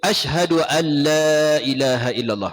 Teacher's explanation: an tu nun mati bertemu lam, idgham bila gunnah. An tu jangan dengung.